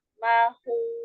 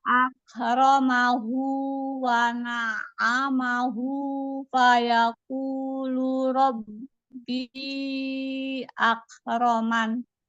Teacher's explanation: ketika hu yang pertama dipanjangkan, Bunda itu kan ada mad silah sugra ya